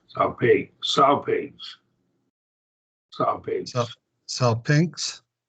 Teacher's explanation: The gamma and the Kasi blend together. There's not a vowel between them.